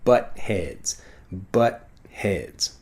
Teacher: The T sound basically disappears.